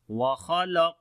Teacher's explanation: Noon we long due to standing fatha on it, and after the meme sakin, the next letter is hamza. We make the clear sound of meme here, which is izhar shafawi again · Kha and qaf we read in heavy sound, and on the qaf we make qalqala as well, which is the weak qalqala again. Noon we long due to standing fatha on it, and after the meme sakin, the next letter is hamza.